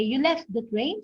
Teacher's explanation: it used a rising intonation and a high pitch because it is a question answerable by yes or no